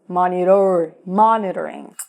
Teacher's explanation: Reparou que a letra T vira quase que um R? Então eu não falo monitor, eu falo monitor, monitor, monitoring.